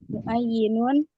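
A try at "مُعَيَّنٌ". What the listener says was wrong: muayyanun, kan ya-nya di fathah. Muayyanun.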